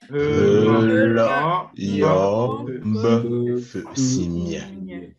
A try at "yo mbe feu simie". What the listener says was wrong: Appliquez les tons, hein. La, yo, mbe, feu, simie.